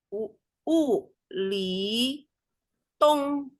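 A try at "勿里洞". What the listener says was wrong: 洞。 Jangan naik, Bu, belakangnya. Tung.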